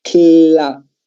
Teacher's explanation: Estamos sinfono, sílaba trabada, lo que quiere decir es que estamos expresando dos sonidos consonánticos en un tiempo de uno. Es decir, yo digo el cla, estoy diciendo la k y estoy diciendo la L.